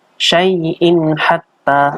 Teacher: ada tanwin bertemu dengan ha. Ini namanya idhar, bacaan idhar atau jelas.